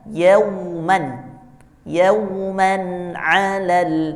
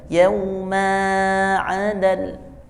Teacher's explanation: Ketika ada tanwin di akhir kalimat dibaca panjang 2 harokat. Kalau di tengah itu tidak dipanjangkan. Seperti kata yauman, yauman alal.